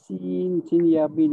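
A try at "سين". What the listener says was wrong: Sin ya nun. Sin ya nun, bukan sin ya mim. Ada orang sebut sim, huruf sim. Tutup mulut. Itu salah. Dia sin, nun mati.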